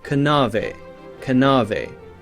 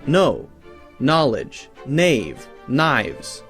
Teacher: like nave k-n-a-v-e would have been pronounced something like kanave kanave now we have a silent k